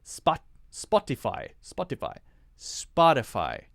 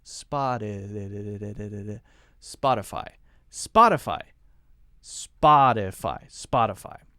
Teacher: notice I'm not saying spot to fortify spot to to to I'm not pronouncing the T sound in a very strong way I'm not saying spot Spotify Spotify Spotify very light T sound